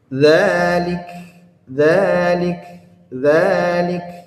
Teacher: disukunkan maka dia ada hamasnya